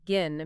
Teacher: The H modifies the preceding vowel, lengthening it and giving it a slightly different quality. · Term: silent H